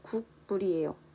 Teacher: 국물은 빠르게 발음을 하면 앞서 국민처럼 궁으로 발음 나고 있어요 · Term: 비음화